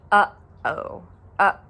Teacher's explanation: one of those consonants is called the okina and it is a glottal stop